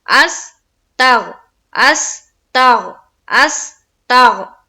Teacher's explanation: गैन में आवाज बिल्कुल रुक जानी चाहिए, बिल्कुल गैन हर्फ में हमारी आवाज रुक जाएगी। यहाँ पर कलकला नहीं होगा, बिल्कुल आवाज रुक जाएगी।